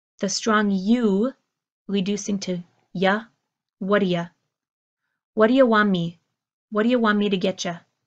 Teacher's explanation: You hear my what do you, reducing to this phrase of what are ya, what are ya. The T and the D pulling together for one single D sound.